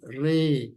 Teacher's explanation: kemudian penjelasannya, yaitu tadi sudah saya sampaikan, karena ada huruf fathah di bawahnya ada tulisan imalah, ini merupakan suatu bacaan yang khusus, bacaan gharib, jadi harus dibaca miring 2 harokat